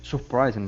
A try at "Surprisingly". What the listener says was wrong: Okay, surprisingly. Okay, so make sure to pronounce that ly at the end as well.